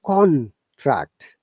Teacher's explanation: con higher intonation than tract lower intonation